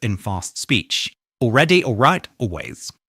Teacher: Many native speakers drop the L sound in several words spelled A L, when technically it should be there.